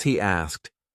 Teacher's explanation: We have this extra Y between these two words, and this is why it sounds like he asked. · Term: intrusion